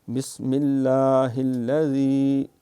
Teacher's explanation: لفظ اللہ کا نام باریک ہے کیونکہ لفظ اللہ کے نام سے پہلے بسم اللہ کی میم کے نیچے زیر ہے